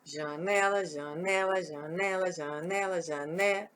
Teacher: Ó, o né vai lá em cima. Então, a sílaba tônica de janela é o né